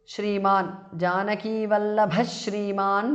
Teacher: Visarga changes to sh. Shriman. Janaki Vallabha Shriman because of sandhi.